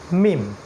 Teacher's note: মিম যেটা ঠোঁটের একটু বাইরের পার্ট থেকে উচ্চারণ করতে হবে